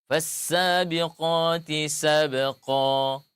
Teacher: yaitu tanwin yang harusnya nun sukun diiwat diganti menjadi alif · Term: mad iwad